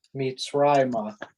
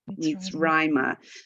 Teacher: So the accent is on Rai.